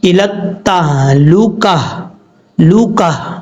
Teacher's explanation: تو یہ گول تا جب ہو، جس لفظ کے قاعدہ سننے پہلے جس لفظ پہ آپ وقف کر رہے ہیں اس لفظ کے آخر میں اگر گول تا ہو تو وقف کرتے ہوئے اس گول تا کو ہا سے بدل دیں گے اور ہا کو ساکن کر دیں گے